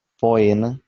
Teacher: AE e o OE pronunciam-se separados as vogais